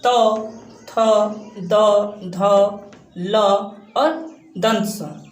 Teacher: दंत मतलब दांत से टच होता है जीभ